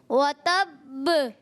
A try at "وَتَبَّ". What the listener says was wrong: Good, زبردست.